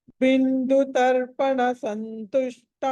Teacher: తర్వాత అనుస్వారము ద ఉంది నకారం పలకాలి ఆ తర్వాత సంతుష్ట దగ్గర కూడా స తర్వాత అనుస్వారం ఉంది అక్కడ కూడా న పలకాలి